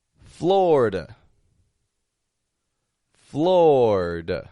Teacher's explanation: that eye in the middle totally dropping out instead of a Florida just two quick syllables FL fla and